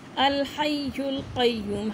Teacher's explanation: ہاں کی ساؤنڈ حلق سے حروف حلقی میں آتا ہے